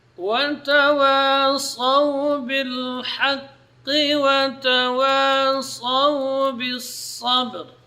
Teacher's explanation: Ra di sini karena sebelumnya itu fathah, maka dibaca tafkhim. Ya. Ra-nya dibaca tebal.